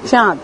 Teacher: নাসিক্য ব্যঞ্জন দন্তের ন লোপ পেয়েছে এবং পূর্ববর্তী স্বর অ দীর্ঘ হয়ে আ হয়েছে এবং অনুনাসিক হয়ে অয় চন্দ্রবিন্দু আকার হয়েছে।